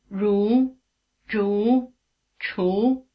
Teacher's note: h and CH are described as retroflex consonants this means that they are pronounced with the tongue curled back in the position for R